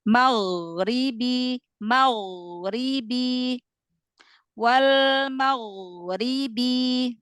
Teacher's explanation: Nah, rinya tipis. Nah, ghainnya walaupun sukun dia tafkhim